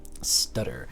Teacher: it's flapping one time one flap one touch and let go